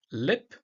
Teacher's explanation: the L is a clear L, pronounced with the tongue tip of the alveolar ridge